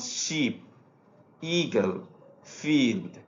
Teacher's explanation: এগুলো উচ্চারণে আমরা ই সাউন্ডটা দীর্ঘ সাউন্ডটা ব্যবহার করি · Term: দীর্ঘ ই